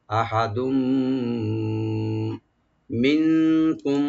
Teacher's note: তানবিনের পরে মিম আসছে, এখানে আমরা ইদগাম উইথ গুন্না করব